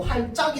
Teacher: 그래서 할 플러스 작거리다라고 했을 때 이 할작이라고 하면은 티읕은 발음 안 되고 할짝이 된단 말이야